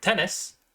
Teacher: voiceless alveolar stop T can be heard in the word tennis